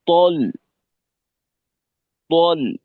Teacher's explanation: মোটা হরফের জবরের উচ্চারণ এটা অ স্বরের মতো হয়